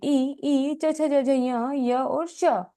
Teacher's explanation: इन वर्णों का उच्चारण तालु स्थान से होता है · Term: तालव्य